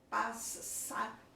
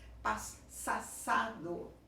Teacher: Nós não falamos duas vezes a emissão do S.